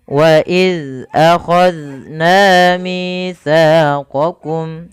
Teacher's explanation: Pada lafal waidz akna huruf dalal hati-hati jangan sampai terbaca dengan huruf zai ketika dia sukun. Waid dalal tipis.